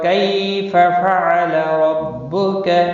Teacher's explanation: کئی یا لین ہے، تھوڑا نرمی کے ساتھ کھینچ کر ادا کریں گے۔